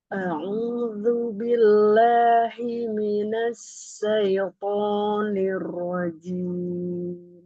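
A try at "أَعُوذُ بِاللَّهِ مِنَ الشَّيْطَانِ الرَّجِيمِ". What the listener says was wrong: Iya, pada huruf shinnya juga ya Umi, tafasyinya tidak ini, tidak terhembus dengan power ya, karena tafasyi itu dia harus ada powernya ya. Nah, ini harus difahami bahwa tafasyi ini artinya dia menyebar. Jadi, pengucapan hurufnya ini disertai dengan menyebarnya suara di dalam mulut. Jadi, ada sebarannya ya suaranya di dalam mulut. Jadi, suaranya seperti terdorong dengan kuat. Himinash, ash.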